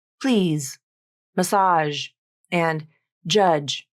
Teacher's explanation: In any word that ends with a voiced fricative consonant or a voiced affricate consonant, like please, massage, and judge, the voicing usually drops from the last 50% of the final voiced sound